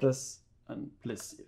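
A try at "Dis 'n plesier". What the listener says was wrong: Das a plesir. It's we don't pronounce the N as a N. We just say das a plesir.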